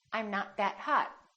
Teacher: you need to hold the T at the end to have a more American accent